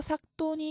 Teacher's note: 겹자음, 종성에 오는 겹자음은 대표음 기역이 남습니다. 그래서 여기서 뒤에 오는 디귿이 된소리로 바뀌어서 삭돈이 올바른 발음입니다.